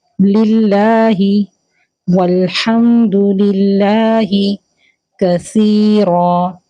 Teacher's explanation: آگے للہ، تو للہ کو یہاں پر اللہ تعالیٰ کا نام باریک پڑھا جائے گا کیونکہ لام کے نیچے زیر ہے